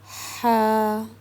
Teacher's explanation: इसको हमने बहुत ही पुर सुकून के साथ गले के बीच में से निकालना है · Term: हलवे वाली हा